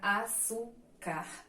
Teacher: temos lá as paroxítonas que são as sílabas que tem que a penúltima sílaba mais forte